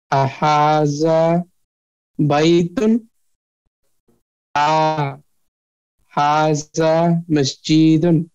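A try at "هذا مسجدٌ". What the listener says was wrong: হ্যাঁ মসজিদুনে কোনো মাদ হবে না হাজা মসজিদুন হ্যাঁ হাজা মসজিদুন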